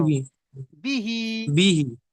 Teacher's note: দেখেন আপনি বলছেন এখানে যে বাজের বি আর হা খাড়া জের হি, যেহেতু হার নিচে খাড়া জের এসছে আর খাড়া জেরটি ইয়া মাদ্দার সমতুল্য, একালিফ পরিমাণ টান দিয়ে পড়তে হবে। তাহলে বা জের বি, হা জের হি, তাহলে কি হয়, বা জের বি, বা বি যদি বলেন তাহলে ভুল হবে, কারণ এখানে জের এসছে, যে কি হলো হারাকাত।